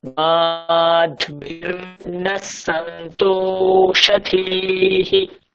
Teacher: মা দীর্ঘ, ধী দীর্ঘ, রেফ আছে, তাই হলো মাধ্বীর নাসন্ত।